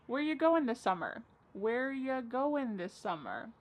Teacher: Where ya, which is you, goin', dropping the G.